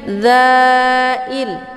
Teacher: Ini za-nya dibaca panjang, boleh 4 atau 5 ketukan. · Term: mad jaiz munfasil